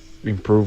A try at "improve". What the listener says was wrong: Kind of did ing instead of im. Improve. Improve.